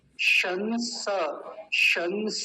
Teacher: ध्यान से समझेंगे इस वाले शब्द को बोध रुष बोधुर शस पहले तालव्य सकार फिर दंती सकार दोनों के बीच का अंतर पता होना चाहिए